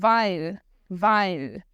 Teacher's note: esse I no final é realmente a língua no céu da boca fazendo como se fosse o início do L de Ludmilla.